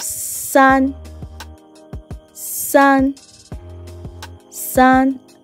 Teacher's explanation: like i said it's a flat tone